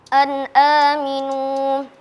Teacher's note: Hukumnya idhar halqi karena nun sukun bertemu dengan huruf hamzah, dibaca jelas.